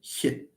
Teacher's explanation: the sound h, for example, which is a voiceless palatal fricative